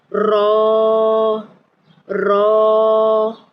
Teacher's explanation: را کو پر پڑھنا ہے یعنی اس کو موٹا کر کے ادا کرنا ہے